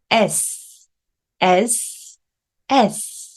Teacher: 굉장히 날카로운 소리요 혀끝이 간질간질 느껴지실 거예요